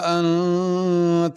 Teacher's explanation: انت کے نون پہ غنہ کرنا ہے